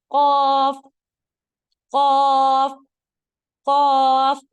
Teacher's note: जब आप लेटर कफ अदा करेंगे आपको महसूस होगा कि जुबान आपकी पीछे की जानिब खींच रही है